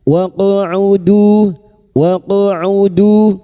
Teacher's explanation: Qaf sukun huruf qaf yang mati asli di tengah kalimat qalqalah sugra.